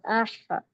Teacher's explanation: آپ سب غور کریے، اس حرف کو پڑھیے اور بیچ حلق پہ انگلی رکھیے، تب آپ کو محسوس بھی ہوگا کہ حلق میں سے ہا کی جو آواز ہے وہ درمیانی حلق سے ادا ہوتی ہے۔ حمزہ ہا زبر اح، تو یہ حلق کا درمیانی حصہ ہا کا مخرج ہے۔